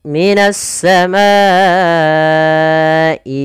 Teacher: kita memanjangkan untuk hukum tajwid mad wajib muttasil sepanjang empat harakat atau lima harakat